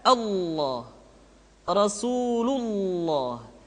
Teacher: Lafaz Allah dimanapun kapanpun, maka lam yang terdapat pada lafaz jalalah tersebut mesti ditebalkan.